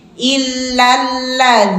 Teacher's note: dinya dua harakat nanya satu harakat jangan sampai nyeret